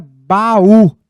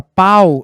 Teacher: na palavra baú, eu tenho uma vogal. Já na palavra pau, eu tenho uma semivogal.